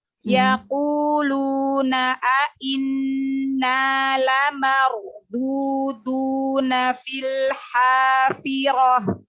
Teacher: Ro sukun sebelumnya fathah kan tebal ya